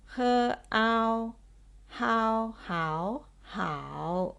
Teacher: starting with h as a consonant and the compound vowel a and o pronounced as ow